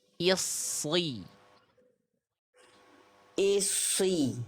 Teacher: lidah dalamnya diangkat ke atas kayak melafalkan huruf qof. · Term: huruf shadnya